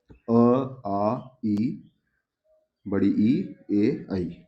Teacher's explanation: अ वर्त मुखी जिसमें होट गोल ना हो